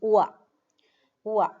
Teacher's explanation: the second one is a diphthong, combination of two sounds, oo and a.